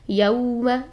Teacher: یو واو لین ہے یہاں پر تو واو کو موڑ کر ادا کریں گے